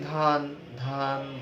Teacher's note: ধান বললে একটু লম্বা হচ্ছে, খুবই সামান্য যদিও